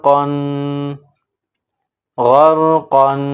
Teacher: بڑا قاف نقطوں والا، اس کو موٹا پڑھیں گے